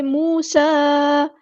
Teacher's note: سین کی سیٹی واضح کریں گے، مد آ گئی ہے، ڈسکنیکٹڈ مد ہے، مد منفصل۔